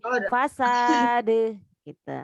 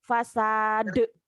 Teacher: Jangan ada hamzah ujungnya.